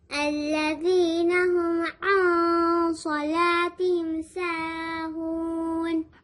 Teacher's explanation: جب تنوین یا نون ساکن کے بعد حروف اخفا آتا ہے، سواد از حروف اخفا، تو ہم نون کو چھپا کر پڑھتے ہیں، نون کو ہم ظاہر نہیں کریں گے